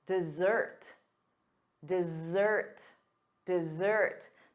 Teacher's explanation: The syllable stress is on the second syllable, da-da, dessert.